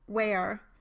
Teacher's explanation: for the labiovelar glide w, like in where, the lips are rounded, the velum is raised, and the tongue constriction is greatest between the back of the tongue and the velum.